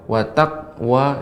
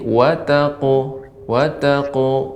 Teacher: Ketika qalqalah pada huruf qaf dan qalqalah ini caranya dipantulkan. Kalau Ibu mengucapkan wa taqwa, ya berarti tidak memantul.